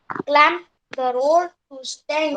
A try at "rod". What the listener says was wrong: It is not road, it is rod. It's rod, I said. You are saying, pronouncing it like this. This is what you are saying.